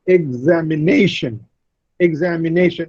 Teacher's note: Ne receives the primary stress and za receives the secondary stress.